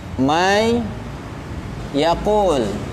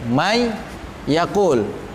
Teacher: Idgham bi gunnah maksudnya ya, tadi yang sudah kita bahas, dia memasukkan, kemudian menurut istilah adalah dia tanwin atau nun sukun kemudian dileburkan. Yang tadinya 2 huruf seperti dibaca menjadi 1 huruf karena ditasdidkan.